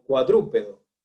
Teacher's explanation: cuya acentuación, cuya mayor fuerza de voz, pues están en la antepenúltima sílaba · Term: esdrújulas